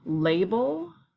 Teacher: The end of that word is more of an ul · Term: schwa sound